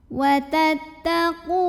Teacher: Di sini ada hukum mad tabi'i karena ada waw sukun yang didahului baris dhammah. Maka qaf yang berbaris dhammah kita panjangkan cukup 2 harokat saja.